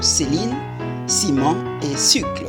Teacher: il a un son sifflant devant E, I, Y, comme par exemple dans les mots Céline, ciment et sucre